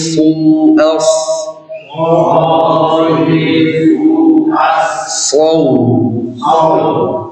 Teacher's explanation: Ini kita perhatikan shad hurufnya berat bertemu dengan waw. Jadi jangan bacanya saw itu jadi sin.